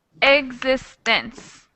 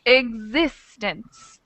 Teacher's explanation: existence it's the second syllable that gets a little more power a little more Force existence so it's the second syllable that has the stress on